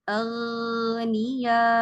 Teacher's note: ان کو ان کی مخرج سے ادائیگی کر دیں گے نارمل طریقے سے, ایکسٹرا موٹا نہیں کریں گے. جتنا موٹا وہ استعالہ مخرج کی وجہ سے ہوا ہے بس اتنا ہی رہنے دیں گے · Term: تفخیم نسبی